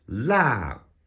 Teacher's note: Let's try the fourth tone, which is a harsh, sharp falling tone.